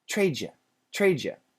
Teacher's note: When a D is next to a Y, usually in America, it changes to a J sound, J. So trade you becomes trade you, but we don't say Jew, we say J, yeah.